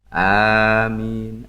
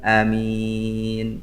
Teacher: A-nya panjang, min-nya panjang.